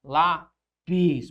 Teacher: Primeiro porque ela é uma paroxítona. Lá a sílaba tônica recai sobre a penúltima e ela termina em is, ó.